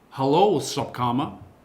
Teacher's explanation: And the Dutch will pronounce the S as a sh.